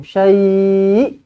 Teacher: Pastikan ada hamzah di hujung.